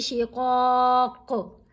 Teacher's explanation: یہاں قوف کو ساکن پڑھے ہیں نا، وقف کرنے کی صورت میں قوف ساکن پڑھی گئی، تو جب ساکن پڑھیں گے تو پھر اس کے اوپر کلکلا بھی کریں گے